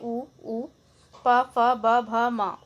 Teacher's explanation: ओष्ठ से बोले जाते हैं आपके उ, प, फ, ब, भ, म, ओष्ठ व्यंजन कहलाते हैं।